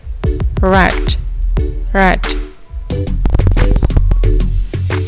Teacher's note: to produce R sound, the tongue tip raised and curl back near the alveolar ridge